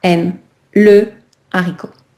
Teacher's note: Le H aspiré, il n'y a pas de liaison et il n'y a pas d'élision. D'accord? Donc, je vais vraiment garder, par exemple, mon article complet.